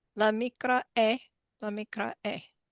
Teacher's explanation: that is a perfect pronunciation of aleph you're doing there. It's called a glottal stop.